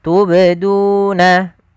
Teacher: ini ada bacaan qolqala pada lafal huruf ba yang dia sukun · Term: Qalqalah Sugra